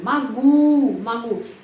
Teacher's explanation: Kenapa O dibaca A? Karena penekanannya berada pada huruf U. Karena itu O dibaca A.